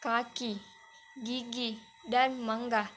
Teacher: Berikutnya yaitu velar, yaitu bunyi yang timbul karena bagian belakang lidah menyentuh langit-langit lunak, misalnya K, G, dan eng, seperti dalam kata kaki, gigi, dan mangga.